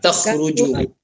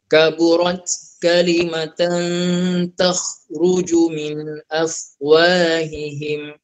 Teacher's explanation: Kha tu bunyikan kha, lepas tu Ibu jangan sampai terqalqalah pula. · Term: bunyi kha